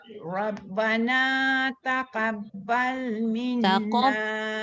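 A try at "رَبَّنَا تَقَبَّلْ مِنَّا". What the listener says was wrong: Jangan taqab. Dia tak boleh sama level ta dengan qaf jadi ka. Taqabbal.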